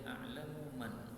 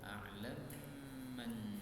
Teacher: mim ketemu mim boleh idgham